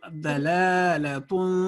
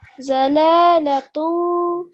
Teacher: इसको ज़्वाद नहीं, Arabic accent में जो पढ़ेंगे तो इसको दौद पढ़ेंगे